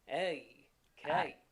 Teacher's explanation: So it's very similar as in the sound we have our initial sound, the A, and then we have that on glide.